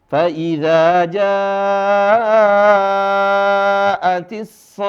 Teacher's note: Ini janya dibaca panjang 5 harokat.